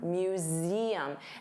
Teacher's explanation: Z. So notice you have that voiced Z sound